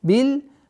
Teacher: С огласовки фатха уходим на лям. Бил, так как мим является лунным звуком.